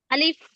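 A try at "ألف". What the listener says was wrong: আলিফ হবে না, ফ উচ্চারণ হবে। আলিফ, ফ, শেষে ফ উচ্চারণ হবে। ফা এর মতো উচ্চারণটা অনেকটা, যারা আমরা ফা উচ্চারণ করি পুরোপুরি ভাবে তাদের জন্য আরো বেশি ইজি।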